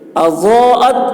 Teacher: ضاد کی آواز موٹی ہوگی اور کھینچیں گے